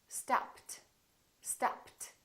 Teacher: What happened to the ed? It became a t